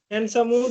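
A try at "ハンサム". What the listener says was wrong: হানসামো, হ্যান্ডসামো হবে না।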